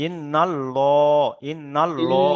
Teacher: আল্লাহ, এখানে তাহলে নুনের উপরে জাবার এসছে, তাহলে আল্লাহ শব্দটাকে পুর করে পড়তে হবে, অর্থাৎ ল উচ্চারণ হবে।